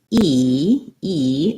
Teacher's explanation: high front vowel this is because when i'm saying e e the resonance happens in the front of my mouth and my tongue is up high